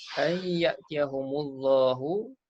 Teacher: nun mati jumpa ya idgham ma'al gunnah masukkan ya dalam nun beserta dengung